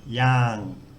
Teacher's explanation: So the initial consonant is low class. It's got a long vowel and it ends with the ngongu ng sound. And we can continue voicing that, yang. So it has a live syllable. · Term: mid-tone